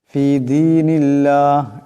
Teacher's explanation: ফি দীনিল্লাহ এখানে আল্লাহর নামের ডাইনে জের আসছে, আল্লাহর নামকে পাতলা আওয়াজে পড়তে হবে, মোটা করে পড়া যাবে না